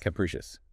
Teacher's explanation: 3 syllables. Stress on the second.